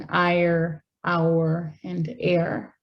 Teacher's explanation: speakers who pronounce R at the ends of words may also have retroflex sounds with the tip of the tongue raised in ire, our, and air. So it's a sound that doesn't just occur by raising the tip of your tongue against this region for these sounds at the beginning, but it's also a sound that occurs at the end of a word.